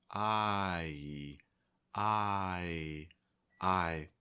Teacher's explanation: you're starting with your mouth open and wide eye and then you're closing it raising your tongue